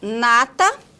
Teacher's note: Temos o na, que é uma consoante nasal alveolar, no início de sílaba, como em nata